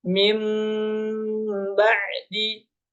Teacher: maka nun sukun itu berubah menjadi mim